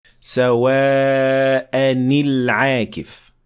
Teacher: یہ نون قطنی ظاہر کرتا ہے کہ آپ کو تنوین کے نون کو کسرہ دینا چاہیے تاکہ دو ساکن حروف کو ایک دوسرے کے بعد آنے سے روکا جا سکے